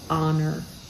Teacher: they want to spell ho they want to say h-o-n-o-r honor pronouncing that H with the breath and we don't do that in English we hold back honor we start with the O and just · We start with the O and just know that the H is there, but we don't say it out loud. So it's honor.